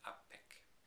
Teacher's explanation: We would expect unpek if there had been no assimilation, but unpek, the nun is assimilated into the p and becomes apek